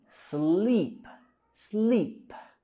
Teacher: en la mitad el sonido vocálico largo I